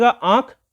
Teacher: उसका उच्चारण होता है नाक और मुख दोनों से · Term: अनुनासिक